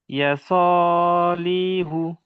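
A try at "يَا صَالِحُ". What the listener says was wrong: লি টান হবে না, ইয়া টান হবে, ইয়া সলিহু।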